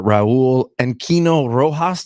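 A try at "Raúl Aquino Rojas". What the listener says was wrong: Aquino Rojas. Yeah, Raul Aquino Rojas. You gotta roll the R.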